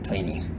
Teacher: they often drop the T sound.